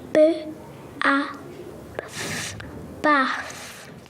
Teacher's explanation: the child sounds out B A and then blends to baath which often occurs in six-year-old speech and is a feature of a number of accents